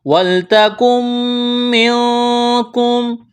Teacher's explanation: نون ساکن کے بعد کاف ہے، یہاں پر اخفا کریں گے، آواز ناک میں چھپائیں گے۔